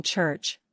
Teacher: sounds like CH in church which has a stop a t sound followed by friction a sh sound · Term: affricate